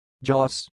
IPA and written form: dʒɔːs (Joss)